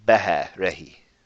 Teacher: it's a short, breathy H. Behe, rehi.